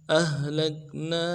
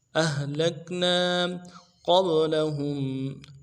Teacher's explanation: ساتھ ملانا ہے، لام کو کاف کے ساتھ ملانا ہے اور نا میں الف مدہ ہے، ایک الف دار میں کھینچیں گے ، اہلکنا قبلہم، قبلہم، قاف کو باء کے ساتھ ملانا ہے،